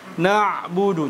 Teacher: sifatnya adalah tawasud ya sehingga kita pun mengalirkan suara ketika kita matikan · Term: huruf Ain